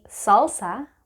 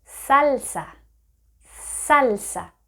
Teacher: in Spanish, your tongue is almost flat, and once again, it is touching your upper teeth